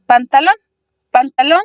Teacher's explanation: tiene a su sílaba tónica su sílaba fuerte en la última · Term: palabras agudas